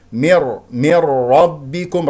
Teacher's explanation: راء مفخمه لانها مفتوحه والباء مشدده شديد حرف الباء شديد مجهور لا نفس ولا صوت رب ربكم